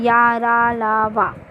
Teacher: इनका उच्चारण करते समय मुख से वायु जीभ के दोनों पार्श्वों से बाहर होती है, मतलब अगल बगल से बाहर निकलती है, जैसे या, रा, ला, वा। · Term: अंतस्थ व्यंजन